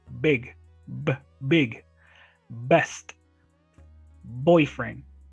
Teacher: So B sound is bilabial.